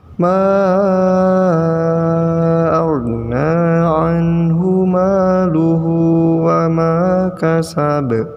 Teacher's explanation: Ingat, ma pada awal ayat itu panjang 5 harokat.